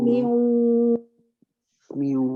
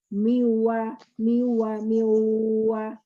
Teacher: Miu. Jadi ada separuh suara keluar dari mulut, separuh lagi keluar dari hidung. Juga tidak sepenuhnya suara itu dari hidung, karena mulut kita masih terbuka di posisi wa. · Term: suara gunnah